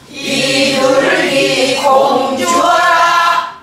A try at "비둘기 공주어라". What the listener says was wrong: 공은 높지 않아요. 주어라에서 올려요.